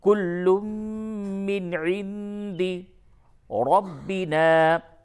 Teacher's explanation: نون ساکن کے بعد دال ہے، یہاں پہ اخفا ہوگا